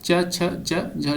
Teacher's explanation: च, छ, ज, झ जो है तालव्य व्यंजन के उदाहरण है